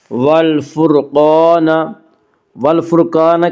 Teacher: اس کا قاعدہ یہ ہے کہ را ساکن سے پہلے زبر اور پیش آئے تو را ساکن کو پر پڑھا جائے گا، را ساکن سے پہلے زیر آئے تو را ساکن کو باریک پڑھا جائے گا، یا را ساکن سے پہلے فا کے اوپر پیش ہے اس لیے را ساکن کو پر پڑھیں گے۔ والفرقان، قاف کو پر پڑھیں گے، قاف حروف مستعلیہ میں سے ہے، حروف مستعلیہ 7 ہیں جن کا مجموعہ خص ضغط نقز ہے، یعنی خا، صاد، ضاد، غین، طا، قاف، ظا، یہ 7 حروف ہمیشہ ہر حال میں پر پڑھے جاتے ہیں۔